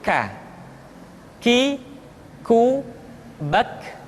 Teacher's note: Diucapkan dengan mengangkat pangkal lidah kita ke posisi di depan huruf Qaf. K. Diucapkan dengan mengalirkan nafas kita. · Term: huruf K